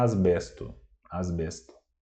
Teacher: Só que o S a gente não vai pronunciar como S antes do B, né? Falando normalmente a gente vai falar asbesto.